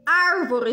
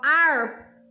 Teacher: palavra é proparoxítona como árvore já tem um acento aqui ó ar é a antepenúltima sílaba que é mais forte